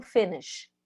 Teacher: o verbo finish, o último som é sh, põe a mão na garganta agora, não vibra